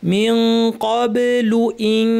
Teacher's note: মিন ক্বাবলু ইন, ইখফা, নুন সাকিন কাফ এসেছে, জিহ্বা কাফের মাখরাজে লাগিয়ে নাক থেকে লম্বা গুণা